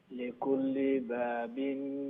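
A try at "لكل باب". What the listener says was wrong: বা ফয়লাটা লম্বা হইব।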